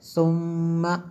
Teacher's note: میم شدد ہے اس لیے غنہ کیا